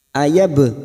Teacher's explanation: bak sukun qalqalah sugro yang mati asli di tengah kalimat, qalqalah sugro jangan lupa dipantulkan.